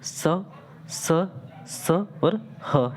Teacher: सो जब आप इनका उच्चारण अगर करोगे, सो इनका उच्चारण करते समय क्या होता है साथियों, कि जब इनका हम उच्चारण करते हैं तो एक प्रकार के क्या होती है, एक प्रकार का घर्षण, है ना, एक प्रकार का घर्षण से उत्पन्न होता है और साथ ही इसमें उष्मी वायु बाहर निकलती है, इसीलिए इसे उष्म व्यंजन भी कहा जाता है।